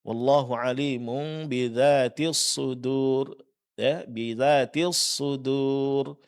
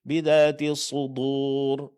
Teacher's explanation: huruf dal kesalahannya di tebalkan, padahal dia harus tipis karena dia huruf istifal